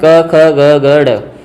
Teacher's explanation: क वर्ग पूरा उच्चारण स्थान कहाँ है वो कंठ होता है।